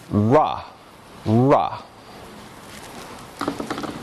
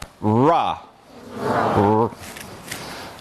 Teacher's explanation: called retroflex gestures and this is sometimes called therefore a retroflex the body of the tongue sort of points up a little bit the sides curve down and around